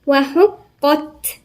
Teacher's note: القاف هنا مشددة ومفخمة، حرف مفخم. وبعدين التاء برضو من حروف الهمس ساكنة.